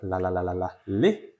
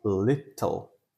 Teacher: We have the light L at the beginning of the word,